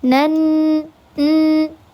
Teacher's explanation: Ketika ada huruf nun yang bertasydid, maka dibacanya didengungkan, digunahkan tiga harakat. Namanya adalah ghunah musyadah.